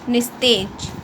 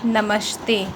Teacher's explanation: यदि विसर्ग के बाद त अघोष ध्वनि हो तो विसर्ग का स हो जाता है।